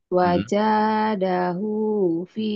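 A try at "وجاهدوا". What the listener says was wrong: Wajahidu. Terbalik. Wajahidu. Wajah, wajahidu fi sabilihi, lihi, wajahidu, wajahidu fi sabilihi.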